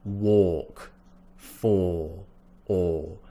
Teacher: we're in the back of the mouth so that means rounder shape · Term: awe